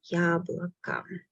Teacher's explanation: Letters O are not stressed. That's why I pronounce them as A.